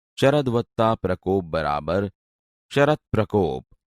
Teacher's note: દ વ્યંજનને બદલે તેના જ વર્ગનો પહેલો વ્યંજન એટલે કે ત જોડાય છે અને આ ત વ્યંજન પ્ર સાથે જોડાઈને સંધિ થઈ.